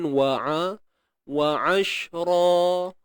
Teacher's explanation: huruf ain. Okey, di tengah kerongkong sempit kan. Wa ashra. Ra di sini dua harakat bila kita berhenti.